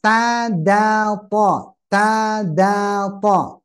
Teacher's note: ujung lidah menekan pangkal gigi seri atas